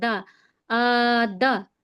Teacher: اب دال پہ زبر کی حرکت ہے تو اسے بالکل نہیں کھینچیں گے